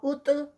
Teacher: طا heavy اور ساتھ میں قلقلہ